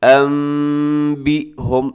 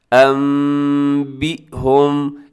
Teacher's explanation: نون ساکن کو ہم میم کے ساتھ چینج کر دیتے ہیں انبئہم، اور ساتھ ہم اس کی غنہ بھی کرتے ہیں انبئہم۔ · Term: اقلاب